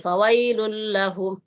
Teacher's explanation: Ini ada tasdid tapi tidak boleh didengungkan.